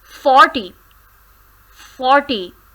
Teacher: Stress is there are two syllables in this word, for T. Stress is on for, 40.